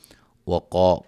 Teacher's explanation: قاف کو موٹا، الف مدہ